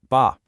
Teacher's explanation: The Mandarin B is what we call unaspirated. That means you make the B sound, but there's no puff of air that follows. It's like the B in the English word spy.